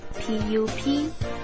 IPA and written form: ˈpʌp.ɪt (puppet)